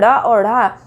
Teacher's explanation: जहाँ पर जीभ के अगले भाग को उठाकर तेज़ी से फेंकते हुए हमारी आवाज़ निकलती है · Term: उत्क्षिप्त